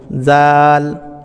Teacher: জোবার আগা সামনের উপরের দাঁতের আগার সঙ্গে স্পর্শ করছে জাল জাল এভাবে পাতলা আওয়াজ বের করবেন যেমনটা আমি বলছি জাল